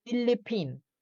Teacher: It's an aspirated P. Parang may pag-combination of P and H.